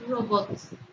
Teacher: Robots suena o tiene su sílaba tónica en la última sílaba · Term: palabra aguda